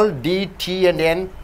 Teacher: for all these l d t and n sounds the tongue should be in the same place behind the teeth